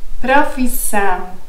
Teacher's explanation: Note also that the noun has in the end nasal sound.